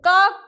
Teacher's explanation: तो क जो है हमारा वो कंठ व्यंजन है। क का उच्चारण करने के लिए हम कंठ का सहारा लेते हैं।